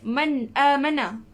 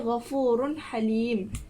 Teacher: Apabila nun mati bertemu dengan hamzah, ni huruf hamzah. Jadi huruf nun ni kita kena baca dengan jelas. Iaitu kita jangan bagi bunyi dengung ataupun jangan tak sebut ke huruf nun tu. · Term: izhar halqi